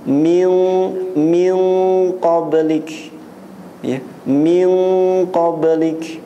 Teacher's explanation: Kalau nun mati bertemu dengan huruf ikhfa yang isti'la, isti'la itu dia tinggi, ya, keluar dengan apa namanya, suaranya itu meninggi, qaf, ya, qaf, ya. Qaf ini salah satu huruf isti'la, maka ikhfa-nya lebih tinggi. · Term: ikhfa hakiki